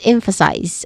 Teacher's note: We stress on the first syllable here, which is M. There's a short E vowel sound in there, and then followed by f.